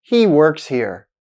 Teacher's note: with a falling intonation at the end, then the sentence is a declarative statement.